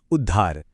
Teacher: जैसे उत और हार मिलकर बनते हैं उद्धार। यहाँ जो ध की मिलीजुली ध्वनि है ना, वो असल में द और ध का कॉम्बिनेशन है